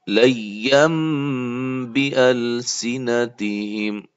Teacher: اقلاب ہو رہا ہے با کے آنے کی وجہ سے